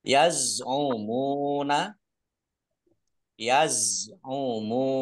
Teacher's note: za sukun bukan kolkolah, jangan dipantulkan.